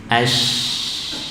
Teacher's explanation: Tafashi hanya terdapat pada huruf shin, ya. Tersebarnya udara. Udaranya menyebar pada seluruh mulut, ya, atau di dalam mulut.